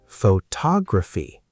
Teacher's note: Now the stress moves to tog.